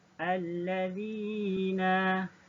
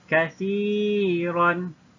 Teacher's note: mad asli mutlaq dan kena panjang 2 harakat